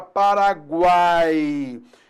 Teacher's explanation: semivogal mais vogal mais semivogal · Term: tritongo